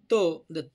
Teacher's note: जिभेचा शेंडा दातांना स्पर्श करतो म्हणून त्याला दंत म्हणायचं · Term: दंत्य